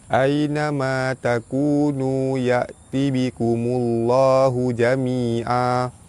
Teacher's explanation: Baris depan bertemu lam jalalah, lam jalalah dibaca tebal · Baris atas bertemu ya di tengah kalimah, madlin, dibaca lembut panjang 2 harakat. Baris atas bertemu alif mad asli panjang 2 harakat, baris depan bertemu waw mad asli panjang 2 harakat, baris depan bertemu waw mad asli panjang 2 harakat.